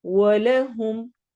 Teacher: की या मद्दा हो रही है, या को थोड़ा सा हम लंबा करेंगे। वलहुम, वाव में होंठ गोल होंगे, ला को लंबा नहीं होने देना।